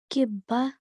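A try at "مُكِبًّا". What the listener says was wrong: Okay, what we have to do is we have to hold the nasal sound. Okay, we have to make a nasal sound and we have to sustain it for a bit. Kibban.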